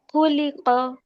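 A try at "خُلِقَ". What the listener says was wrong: সুন্দর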